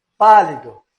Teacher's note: Mas veja bem que o A aqui, ele é bem acentuado, ele é bem forte. Então, aqui ele é tônico também. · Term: vogal tônica